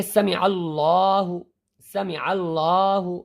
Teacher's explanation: کیونکہ لفظ اللہ سے پہلے عین کے اوپر زبر ہے، اس لیے یہ لفظ اللہ کا لام پر کیا جائے گا۔